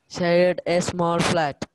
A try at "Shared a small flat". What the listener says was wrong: No gaps, ma'am. Without gap. Say it without gap. Make it, say it more faster. Faster. In 2 seconds, you finish it.